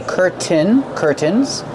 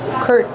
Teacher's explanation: We have two pronunciations. You can pronounce the T and say curtain. Curtains. Or you can use the stop T. Curtain. And then link to the N sound.